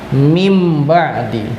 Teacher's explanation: Iqlab ialah, artinya iqlab adalah menukar bak saja. Maka cara membacanya adalah bunyi nun sukun ini berubah menjadi huruf mim